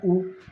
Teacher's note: उच्चारण के समय होठों की आकृति वृत्त के समान गोल होती है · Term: वृत्ताकार